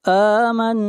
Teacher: نون کے اوپر شد ہے، غنہ ہوگا